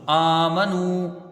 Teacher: حمزہ میں کھڑا زبر ہے، ایک الف کی مقدار اس کو کھینچ کے پڑھیں گے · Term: مد اصلی